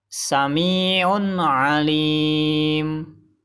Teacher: salah karena bacaan idzhar tidak boleh memantul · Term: berhenti, izhar